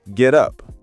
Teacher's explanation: Get up sounds like one word when we speak fast.